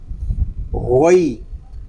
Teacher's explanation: اس کو گئی نہیں پڑھیں گے، گاف کی آواز نہیں آنی چاہیے. غین حالانکہ اوپر والے حصے سے ادا ہوگا، اور غین کو جب پڑھیں گے یہاں بھی حلق ہمارا تھوڑا سا گھومے گا.